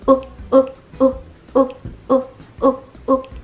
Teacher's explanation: 这个过程当中舌头的后部稍微隆起，贴近后边这个上颚的部分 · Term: 短音